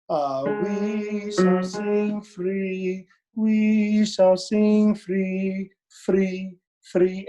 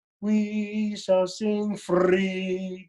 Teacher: you're gonna flip the R, but never roll the R.